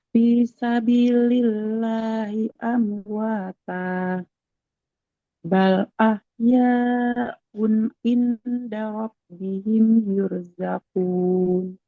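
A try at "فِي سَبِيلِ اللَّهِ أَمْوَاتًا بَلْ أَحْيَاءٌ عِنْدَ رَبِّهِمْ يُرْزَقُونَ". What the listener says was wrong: Oke, alhamdulillah. Barakallah, Ibu.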